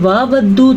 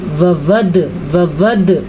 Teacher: دھیان رکھیے گا پڑی زبر کی آواز کو آپ نے لمبا نہیں کرنا، یعنی کہ آپ پڑھیں گے واودو تو آپ نے غلط پڑھا، ٹھیک ہے.